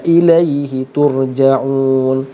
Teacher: ra di sini tebal kerana mati sebelumnya baris depan, maka ra tadi tur ditebalkan, dan ja'un ialah mad arid li sukun.